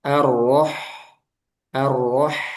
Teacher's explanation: Ro tebal ha-nya tipis. Jangan arwah tapi arwah.